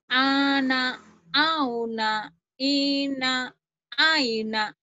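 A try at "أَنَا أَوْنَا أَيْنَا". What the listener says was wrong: Itu ya ciri khas orang Jawa tuh masih ke hidung. Ana auna jangan ke hidung. Ke tenggorokan ana ana auna aina aina.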